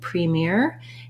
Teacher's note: premier has second syllable stress